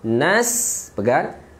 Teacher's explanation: Jelas, masukkan nun ke dalam sin sekejap.